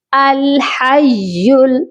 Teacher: اور مشدد لیٹر کی کیا کوالٹی ہوتی ہے کہ یہ سختی سے بھی پڑھا جاتا ہے اور 2 ٹائم ہم اس کو ریڈ کرتے ہیں۔ تو ہم نے یا کو 2 بار پڑھنا ہے، ایک بار ہا کے ساتھ ملائیں گے اور دوسری بار اس کو ہم پھر پڑھیں گے لام کے ساتھ ملا کر۔ ہا یا زبر حی، لام پیش یل، الحیل، اس کو حیل نہیں پڑھنا، ٹھیک ہے؟ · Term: یا مشدد